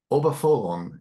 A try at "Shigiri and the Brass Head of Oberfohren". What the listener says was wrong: Almost there. Obalophon. no, you just swap two syllables.